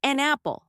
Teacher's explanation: So it sounds like an apple, almost like one word. The consonant n at the end of an flows directly into the vowel sound at the beginning of apple.